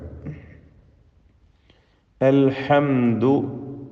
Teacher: സക്കിനായ മീം ഇൽഹാർ ഷഫവി നൽകി മണിക്കാതെ വെളിവാക്കുകയാണ് വേണ്ടത്.